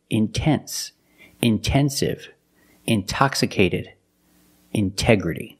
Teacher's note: We have the stress after the NT. We pronounce the T like a pure T.